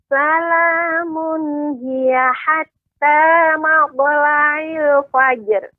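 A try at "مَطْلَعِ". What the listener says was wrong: Kemudian huruf ainnya lebih dijelaskan Ibu, matla'il fajr. Iya, jadi po-nya dijelaskan, ainnya juga dijelaskan, Ibu.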